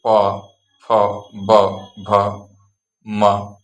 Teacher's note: और पा वर्ग ओंठ से, जैसे प, फ, ब, भ, म।